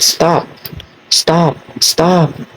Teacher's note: it's unaspirated when you say the word stop stop stop see stop stop there is no puff of air